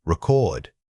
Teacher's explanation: Most people naturally put the emphasis on the first part, but we need to pull that power and volume over to the second syllable. Say it loudly on the correct beat. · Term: stress placement